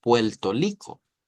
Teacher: cambian la r por una l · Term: alófono